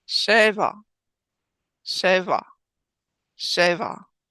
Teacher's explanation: accenting the first syllable in Sheva